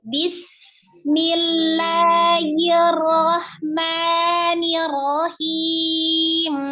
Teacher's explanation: membacanya, sinnya harus dialirkan. Dialirkan, tidak diputus.